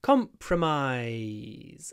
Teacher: The stress is at the beginning, comp, but make sure you stretch out the I's at the end.